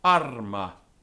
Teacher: If, however, the syllable following the rise was short, as the arma, the syllable containing the rise would register as more dynamically prominent